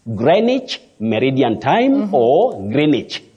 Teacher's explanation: that W is silent